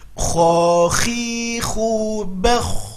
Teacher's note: Ingat, dia harus mengalir ketika sukun, ya, harus mengalir ketika sukun karena dia sifatnya rokhwah